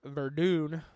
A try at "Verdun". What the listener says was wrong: Ooh, roll it a little bit more. Verdun.